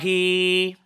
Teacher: the ya صغيرة extends the kasra sound to equivalent to 2